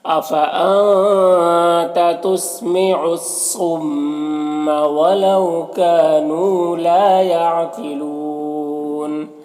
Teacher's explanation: لا میں بھی الف مدہ ہے، اسے 1 الف کے برابر کھینچیں گے۔ یہاں پر قاف حروف مستعلیہ میں سے پر پڑھیں گے، یہاں پر واو مدہ ہے، اور اگر یہاں پر وقف کریں گے تو نون کا زبر سکون سے بدل جائے گا، تو پھر یہاں پر مد لین عارض ہوگا۔